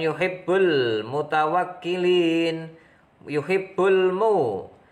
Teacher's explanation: idhar qamariyah, ada alif lam bertemu mim, dibaca jelas